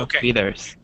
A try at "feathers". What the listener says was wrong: Feathers with a short E sound.